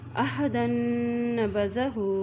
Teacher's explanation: أَوَكُلَّمَا عَاهَدُوا عَهْدًا نَبَذَهُ، آئین زبر ہا، کیونکہ ہا کے اوپر جزم ہے، آئین کی زبر کو ہا کے ساتھ ملائیں گے اور دال کی دو زبر کو نون کے ساتھ ملائیں گے کیونکہ نون کے اوپر شد ہے